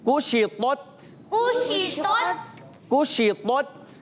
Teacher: काफ को बारीक रखना है, पेश है, और शीन की अदायगी अच्छे तरीके से अदा करेंगे, मुंह में आवाज़ फैल जाएगी।